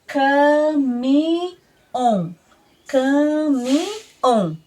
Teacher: corresponde as oxítonas do português cujo acento cai na última sílaba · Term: acentuação aguda